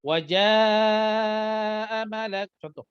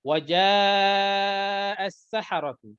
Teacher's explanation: Mad wajib muttasil 4 dan 5 harakat ketika wasal.